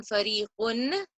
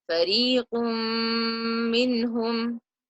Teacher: So instead of saying fariqun, I drop that noon and I merge the sounds and I nasalize for 2 counts